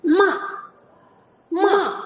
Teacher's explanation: To'rtinchi tonimiz. Tepadan pastga tushamiz.